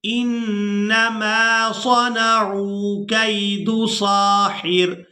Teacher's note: اب یہاں پر دیکھیں کہ یہاں پر علامات وقف ہے، تو یہاں پر ہم نے کرنا ہے وقف، تو وقف کی صورت میں یہاں را کو ساکن کر دیں گے، ہا کو اس را ساکن کے ساتھ ملا کر ادا کریں گے